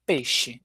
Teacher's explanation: o ditongo ei, que a gente acaba fazendo e